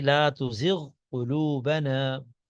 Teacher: غین اور قاف قریب المخرج ہیں لیکن پھر بھی ادغام نہیں ہوگا. لا تزغ قلوبنا الگ الگ پڑھا جائے گا.